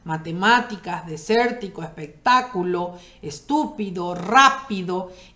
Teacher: las esdrújulas en la tercera sílaba contando desde atrás